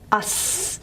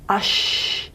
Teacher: So the channel on the tongue is a bit of a wider groove. And the cool air on the roof of the mouth is further back for sh. Us, ush. It is further back.